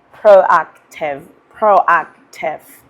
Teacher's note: I need you to stress the sound ak.